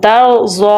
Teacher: وَلَن ترضى عنك اليهود زواد، اب زواد کے اوپر کھڑی زبر ہے، اس لیے ہم نے زواد کو لمبا کیا ہے